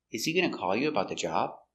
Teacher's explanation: The intonation goes up at the end because it's a yes or no question.